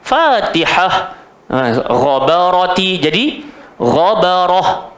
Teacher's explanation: kalau kita nak berhenti, kita kena berhenti macam huruf ha. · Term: ta marbutah